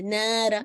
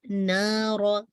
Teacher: اور نہ ایسے نیزل ساؤنڈ میں نہیں کریں گے، نارا نو، نارا، ٹھیک ہے. الف کے اندر نیزل ساؤنڈ نہیں آنا چاہیے